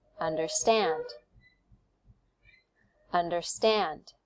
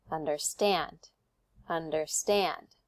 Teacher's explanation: we put the stress on the last syllable